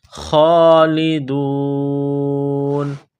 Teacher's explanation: خا کو موٹا کرنا ہے، ایک الف کی لمٹ میں کھینچنا ہے